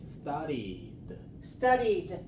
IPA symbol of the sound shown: d